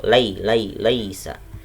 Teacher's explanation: laisa ada ya sukun didahului sama fathah, hukumnya adalah mad layyin dibaca lunak.